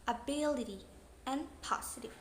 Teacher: The syllable be and po is the primary stress or the strongest stress in the word.